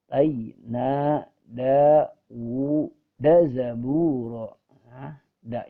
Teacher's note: da yang pertama baru dibaca panjang sedangkan da yang kedua dibaca pendek